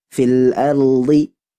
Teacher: jadi posisinya ro Hanya Satu getaran maratan Wahidah fil Ardi langsung ke D Nah kalau itu hafatul